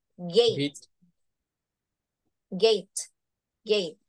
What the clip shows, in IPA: geɪt